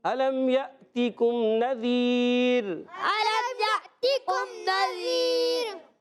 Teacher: را باریک کریں گے پیارے بچوں, را پر نہیں ہونا چاہیے.